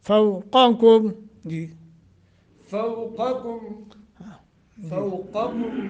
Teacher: فوقکم قاف اور کاف دونوں میں فرق، پہلے موٹا پھر بری،